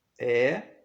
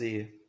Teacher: Nós fazemos a diferenciação na língua portuguesa de sons abertos, E, e de sons fechados, E.